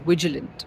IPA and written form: ˈvɪdʒɪlənt (vigilant)